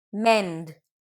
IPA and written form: mɛnd (mend)